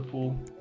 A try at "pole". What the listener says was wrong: It's pole. It's pronounced pole, and it's spelled with double L, not double O.